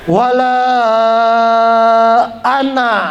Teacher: Alif itu bukan alif mad, ya, bukan. Jadi nggak panjang.